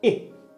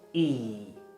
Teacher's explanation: It's similar to the e sound but it's shorter